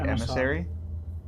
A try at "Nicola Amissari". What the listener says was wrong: Amissari. It's not emissary. AMM. ASSARI. Nicola Amissari.